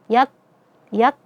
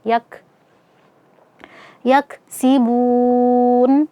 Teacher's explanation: Nah, jadi cara membacanya adalah kita syiddahkan terlebih dahulu, kita tahan suara dari huruf kafnya, yak, yak, kemudian kita berikan sifat hamasnya, aliran nafasnya, yak.